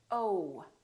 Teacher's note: So, it's actually two sounds. It's oh and oo together. So, you have to move your mouth from oh to oo. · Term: the oh sound